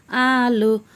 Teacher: হামজা হলকের শুরু হতে শক্তভাবে আদায় হবে, নইলে আইন অথবা ইয়া অক্ষর আদায় হয়ে পড়া হারাম হয়ে যাবে।